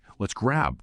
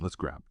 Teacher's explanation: When you say grab, put your lips together for the B, but maybe don't release a big puff of air right after it. Helps it flow into the next word.